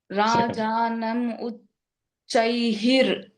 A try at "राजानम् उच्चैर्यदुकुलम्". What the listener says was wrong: Uchair. the Visarga will go away. Uchair Yedukulam Akilam.